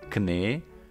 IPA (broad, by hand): kne: